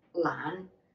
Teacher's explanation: the low-rising lan and your voice goes up a little bit at the end